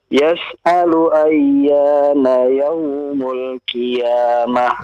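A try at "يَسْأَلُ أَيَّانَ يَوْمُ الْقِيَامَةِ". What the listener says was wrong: Tadi huruf qafnya ya diperbaiki, tebalkan ya.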